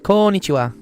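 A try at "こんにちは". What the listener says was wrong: There's two N's in there, so it's konnichiwa.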